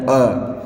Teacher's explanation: अग्र वाला दोस्तों जो लोटनिक है, लोटनिक मतलब कि आगे की तरह झुके हुए हों फिर बने हों, ये ई ए ऐ, ई ए ऐ, ई ऐ, ई ए ऐ, ये हमारे अग्र स्वर जीभ के आगे वाले भाग से, जीभ के आगे वाले भाग से बोले जाते हैं। मध्य, जीभ के मध्य वाले भाग से बोला जाता है अ